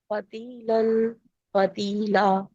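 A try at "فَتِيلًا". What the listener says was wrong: Minute ٹھہریں۔ فتیلا پڑھا آپ نے، ہم نے الف مدہ میں چینج کرنا ہے نا، یہاں وقف کرتے ہوتے الف مدہ کو کتنے کاؤنٹس پڑھتے ہیں؟ 2 کاؤنٹس، تو اس کو لمبا کریں نا لام کو۔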